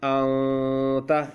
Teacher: نو بیا به دغه نون ساکن او تنوین په پوزه کې پټ ویلی کېږي، یعنی کولاو به نه ویلی کېږي. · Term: اخفا